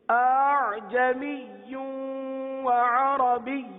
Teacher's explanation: اور تیسری ادائیگی جس میں دونوں حمزہ ہے لیکن پہلا حمزہ واضح ہے، تحقیق کے ساتھ ہے، دوسرا حمزہ نرمی کے ساتھ ہے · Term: تسہیل